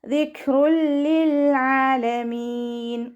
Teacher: നാവിൻ്റെ അറ്റം മേലെ മുൻപല്ലിൻ്റെ അറ്റത്ത് കൊണ്ടുവച്ചിട്ട് ഉച്ചരിക്കുക. കാഫ് സുക്കൂനാവുമ്പോൾ കുറച്ച് എയർ പാസ് ചെയ്യണ സൗണ്ട് കൊടുക്കണം